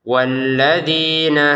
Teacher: Jadi a sama nu panjang. Jadi walladzina di panjang, na tidak panjang.